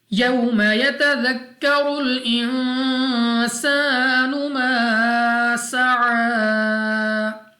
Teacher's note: یوم تو واو ساکن سے پہلے زبر، واو لین بغیر کھینچے پڑیں گے